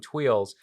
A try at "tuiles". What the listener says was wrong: It's twill. It's still silent. in plural.